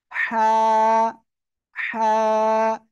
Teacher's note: গলার মধ্যখান হালকা চেপে ধরতে পারেন হাত দিয়ে অথবা ভিতর থেকে চেপে ধরে আপনার উচ্চারণ করতে হবে আর এক আলিফ টান হবে হালকা বাতাস বের হবে মুখ দিয়ে